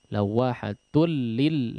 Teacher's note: Tanwin bertemu dengan huruf lam diidghamkan bighairi gunnah ya, bila gunnah, tidak digunnahkan.